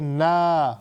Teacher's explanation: مد طبعی، الف مدہ، مد اصلی، سارے اس کے نام ہیں، اس کو ہم نے 3 سیکنڈ تک لمبا کرنا ہے